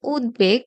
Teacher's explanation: উত উপসর্গ যোগে গঠিত শব্দে খণ্ডতয়ের সাথে যখন ব ফলার সংযোগ ঘটে, তখন সেই বয়ের উচ্চারণ লুপ্ত হয় না। তার মানে অবিকৃত থাকে।